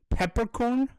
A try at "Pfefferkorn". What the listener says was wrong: That's close enough. It's pronounced with an F instead.